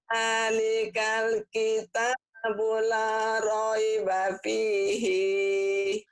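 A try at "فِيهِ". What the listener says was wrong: Kenapa pihi?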